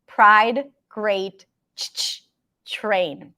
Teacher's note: TR turns into a ch sound.